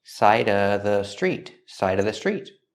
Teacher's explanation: You can say side of the street, or you can eliminate the V sound in of, because it's before a consonant.